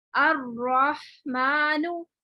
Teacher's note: अब यहाँ देखिए रॉ मुशद्दद पर जबर हो, मुशद्दद पर जबर हो, यानी आप देखें यहाँ पर अर्रहमानु, यहाँ रॉ मोटा ही पढ़ा जाएगा, तशदीद है और जबर है